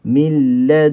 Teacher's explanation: Bila kita sampai ke lelangi, ketika kita dengung itu, mulut kita dah pergi kepada ka. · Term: ikhfa haqiqi